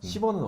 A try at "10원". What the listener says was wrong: 근데 너 방금 10원이 10이 좀 발음이 좀 센 거 같아. 너 너무 10원이래 막.